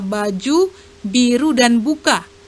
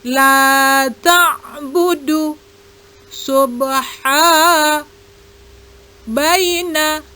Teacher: Huruf ba, makhrajnya pada bibir atas dan bawah. Cara mengucapkannya dengan mempertemukan antara kedua bibir bagian dalam. Bunyinya seperti huruf B pada kata baju, biru, dan buka.